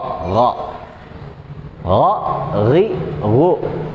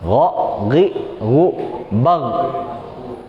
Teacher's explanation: Mirip kayak g, tapi agak sedikit beradu gitu, beradu tenggorokan yang bagian atasnya. Jadi kayak ada geseknya, meskipun dia tidak termasuk dalam huruf hamas. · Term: huruf gha